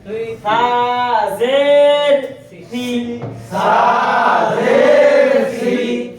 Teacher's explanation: জিহ্বার আগা সামনের উপরের দুই দাঁতের আগার সঙ্গে লাগাইয়া